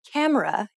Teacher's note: when you say camera in English you put stress on Ka and say it for longer than the other syllables